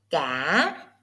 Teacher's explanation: Did you hear the dip? It is hỏi. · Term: question tone